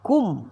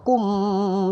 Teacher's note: berhenti di sini mim mati, rapatkan bibir sahaja. Cukup rapat bibir selesai.